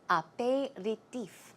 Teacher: The stress goes right there on the last syllable.